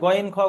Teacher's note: আইন হা, গলার মাঝখান থেকে উচ্চারণ হয়। গইন খ, গলার শেষ ভাগ থেকে উচ্চারণ হয়